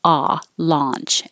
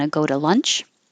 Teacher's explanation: number five launch you open a lot ah launch and number six lunch you keep your jaw more closed